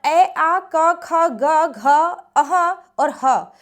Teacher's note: ये आपके कंठ से बोले जाते हैं